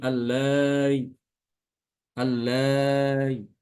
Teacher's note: Jadi tasil itu dia dibaca antara apa? Huruf hamzah dengan huruf mad.